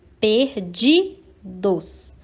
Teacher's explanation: a sílaba de é pronunciada com mais intensidade então ela é a sílaba tônica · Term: paroxítona